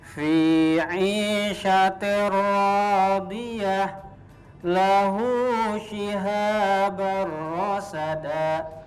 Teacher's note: jadi masuk ke huruf ro tapi tidak ada dengungnya